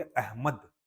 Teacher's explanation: अहमद, म में ज्यादा जोर, म में हम जोर दे रहे हैं, अहमद, ठीक है। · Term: बालाघात